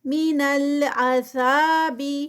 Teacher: ذا پہ 2 کاؤنٹس کیونکہ الف مدہ ہے